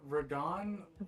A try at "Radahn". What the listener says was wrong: Radahn. It's not Radahn, it's Radahn. Radahn. He didn't roll the R, he rolled the D. Radahn. Radahn.